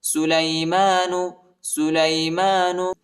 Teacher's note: میم کے اوپر کڑا زبر آیا ہے، اس کو ایک الف کی مقدار تک کھینچیں گے۔